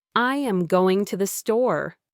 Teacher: the native speaker's voice went up on going and down on store and how going was slightly louder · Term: rise and fall